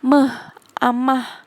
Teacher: Fonem M tempat artikulasinya di bilabial atau dua bibir. Cara artikulasinya nasa atau sengau.